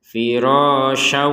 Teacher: Karena bergabung dengan huruf wawu, maka dimasukkan kepada huruf wawu disertai dengungan, sehingga terbacanya firasyaw. Jangan lupa dengung, jangan sekedar masuk.